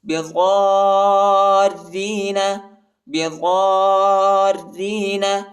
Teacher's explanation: ضاد کے بعد جو الف ہے اس کے اوپر بڑا مد آیا ہے، اس کو تقریباً 3-4 سیکنڈ تک کھینچیں گے اور ضاد کو را کے ساتھ بھی ملانا ہے